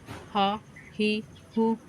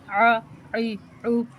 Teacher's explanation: ان کو پڑھنے کا طریقہ یہ ہے کہ ان کو بغیر کھینچے، بغیر جھٹکا دیے جلدی سے پڑھتے ہیں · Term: متحرک